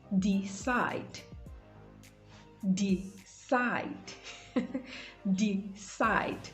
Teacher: So the stress is placed on the second syllable, side, decide.